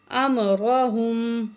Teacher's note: زبر میم ام، را زبر را، ہا پیش میم، ہم، امرہم، را کو موٹا کر کے پڑھیں گے